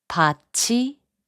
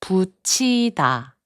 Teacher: the final consonant 티읕 is combined with 이 to make a 치 sound